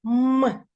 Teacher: губки смикаються м і ми не можемо проспівати цей звук довго губки створюють шум м перший приголосний звук з яким ми з вами знайомимось м